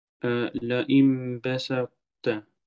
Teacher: De ta is weg, maar de eigenschap van al-itbaq is gebleven. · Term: idghamun naqis